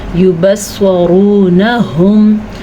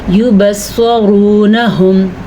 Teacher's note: جو 2 آنکھوں والی ہا ہوتی ہے اس کی آواز چھاتی سے نکلتی ہے، حلق سے نہیں نکلتی